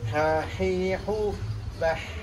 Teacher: Jaroyan itu artinya mengalir. Maka mengucapkan hak yang betul kalau sukun ya, itu tidak sekedar angin lepas tapi angin mengalir. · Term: hamas